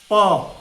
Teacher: दोनों ओष्ठ से प देखिए दोनों ओष्ठ सट जाता है।